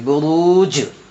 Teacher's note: نقعن، با پیش بو، را پیش رو، برو، جیم ساکن بروج، تو جیم میں قلقلہ ہو کیونکہ جیم حرف قلقلہ میں سے آ رہا ہے اور جیم کے اوپر جزم ہے اس لیے یہاں قلقلہ کر کے پڑھیں گے۔